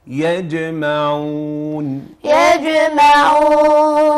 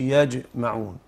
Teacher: الجيم مرققة ومقلقلة وتخرج من وسط اللسان